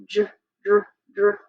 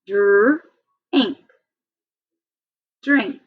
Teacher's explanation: It's a blend, and it's one of the ones that I told you is one of the hardest blends because it sounds like a J.